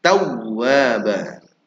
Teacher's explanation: wau yang bertasydid ada nabr ditekan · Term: nabar ditekan